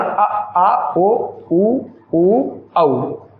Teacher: पश्च स्वर जिह्वा का पश्च भाग गतिशील